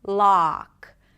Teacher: Lips round just a bit, not an O sound, but more of a back open ah.